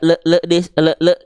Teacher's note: teman-teman melafalkan lam sukun dengan pantulan